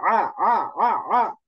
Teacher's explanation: আইন, আ গলার মাঝখান থেকে